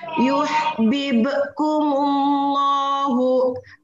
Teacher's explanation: Setiap hatta di depannya huruf Allah itu adalah lam jalalah tafhim, dibacanya harus tebal